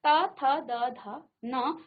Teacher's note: अब देखिए आपकी जीभ आपके दांत को स्पर्श कर रही है, तो दांत से इसे दंत्य कहा जाएगा